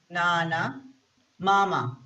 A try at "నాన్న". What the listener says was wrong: It is నాన్న. The second letter has ఒత్తు. Yeah, ఒత్తు. So we need to say నాన్న like that.